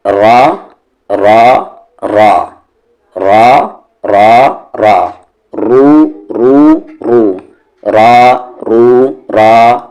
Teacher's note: جس را کے اوپر زبر ہو یا پیش ہو اس را کو ہم ہیوی پڑھیں گے، اور وہاں پر بریکٹ دے کر لکھ لیں کہ جس را کی آواز اوپر کی طرف جائے یا سامنے کی طرف جائے اسے ہیوی پڑھیں گے۔